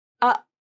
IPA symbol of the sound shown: ʔ